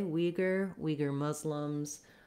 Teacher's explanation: We have first syllable stress in the American English pronunciation, Uyghur. So you would say it that way, Uyghur, Uyghur Muslims, etc.